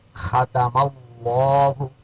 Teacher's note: لفظ اللہ سے پہلے یہاں زبر آ گیا، اس لیے ختم اللہ موٹا کریں گے